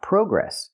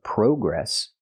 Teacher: We don't use the long o like no and go. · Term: open a sound